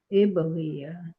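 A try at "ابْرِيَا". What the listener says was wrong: Ya-nya panjang. Ya-nya panjang, Bu. Iberia Iberia. Ri-nya nggak panjang. Iberia.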